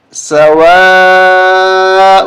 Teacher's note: یہ بڑی مد ہے، اس کو ہم 5 شریف تک کھینچیں گے